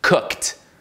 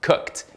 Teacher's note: Essa expulsão de ar, esse bafinho de ar que produz o som de T, na verdade.